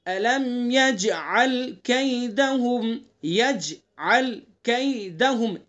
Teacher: جیم کے اندر قلقلہ کریں گے۔ أَلَمْ يَجْعَلْ كَيْدَهُمْ، يَجْعَلْ كَيْدَهُمْ، ایک ایک حرف کو الگ الگ پڑھیں گے واضح کر کے۔